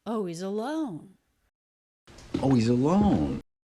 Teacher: of that is because he drops the H and he's so he goes right from the O diphthong into the E vowel · big up down shape of a stressed syllable on alone